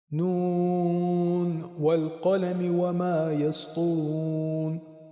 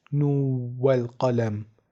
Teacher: اینجا درسته که نون ساکن به حرف واو میرسه، اما اجازه ادغام در اینجا وجود نداره، یعنی نباید قرائت بشه نو والقلم، بلکه به همون صورتی که در ابتدای کار قرائت شد باید خونده بشه و نون در اینجا کاملا اظهار میشه.